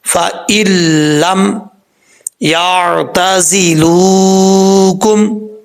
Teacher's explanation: اکثر لوگ جو پڑھتے ہیں کہ وہ سوچتے ہیں کہ پہلے نون بھی پڑھا جائے گا پھر لام پڑھا جائے گا، ایسا نہیں ہے ، فَإِن لم نہیں پڑھیں گے، فَإِلَّمْ يَعْتَزِلُوكُمْ، ٹھیک ہے، وَيُلْقُوا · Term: ادغام